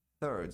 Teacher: A pronúncia de terceiro em inglês é third. TH, língua entre os dentes, produzindo um som de S. Third. Se você não pronunciar esse TH, pronunciar como um T só, aí vai soar como third.